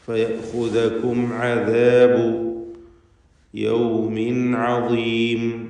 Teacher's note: സാക്കിനത മീമും ശേഷം ഐനും. സാക്കിനത മീമിനെ ഇൽഹാർ ഷഫവി നൽകി മണിക്കാതെ വെളിവാക്കണം